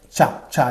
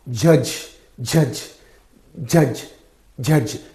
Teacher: the sound begins as a stop with a complete closure and releases as a fricative so complete closure of the air flow is there then sudden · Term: affricates